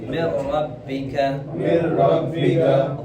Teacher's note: نون ساکن کے بعد کیا آیا ہے؟ را آیا ہے، تو یہاں پر ادغام تو ہوگا لیکن وداؤٹ غنہ